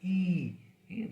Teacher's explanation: the hard palate and the front of the tongue comes very close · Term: फ्रंट क्लोज वोवेल